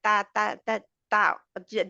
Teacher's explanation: پہلے تا ہے تا باریک ہے اور سمائلی منہ ہمارا ہوتا ہے